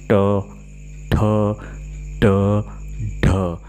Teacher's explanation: मूर्धन्य व्यंजन वह होते हैं जो जिह्वा को घुमाकर मूर्धा पर टकराता है और उसके बाद छूट जाता है।